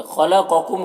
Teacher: خا اور قاف دونوں حروف مستعلیہ میں سے، دونوں کو پر پڑھیں گے